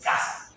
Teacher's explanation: Sordo. Porque no hay vibración muy intensa de las cuerdas vocales. También es velar, porque el punto de articulación está en el velo del paladar. · Oral, porque el aire sale expulsado por la boca, no por la nariz. Oclusivo, porque el aire se retiene y se suelta con una explosión, creo que se llama plosive en inglés.